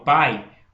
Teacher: Então, eu vou dizer que esse A é vogal, tem som de vogal. E o I é uma semivogal, porque ele é mais fraco dentro da sílaba